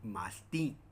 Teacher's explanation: que en este ejemplo no es una palabra grave, sino es una aguda por su acentuación es aguda